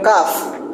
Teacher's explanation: bunyi langit-langit belakang, letupan tidak bersuara tipis